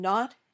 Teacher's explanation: When you say n, your tongue touches the top of your mouth just behind your top teeth, and the air comes out of your nose. This sound is voiced.